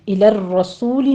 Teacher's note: را کے پر تکرار ہے، 2 بار را مفخم پڑھی جائے گی